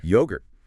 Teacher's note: The emphasis should be strongly on the first syllable. Yogurt. Yogurt, and not yogurty. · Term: strong stress